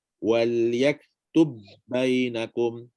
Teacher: Tanpa qalqalah. Tanpa qalqalah dan dia bersifat idgham. Keluar dengan pelanggaran dua bibir. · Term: Huruf ba sakin